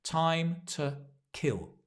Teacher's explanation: the two becomes ta because we stress time and kill